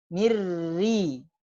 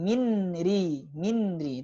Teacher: Mirri sudah tidak ada sama sekali nunnya ya. Bahkan dari segi makhraj pun tidak ada. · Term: idgham kamil